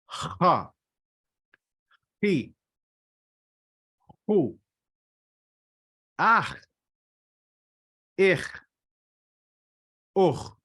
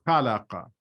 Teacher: So it is a harder KH sound as though you're clearing your throat.